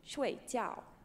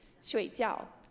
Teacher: so these are both falling tones they're both going to go down down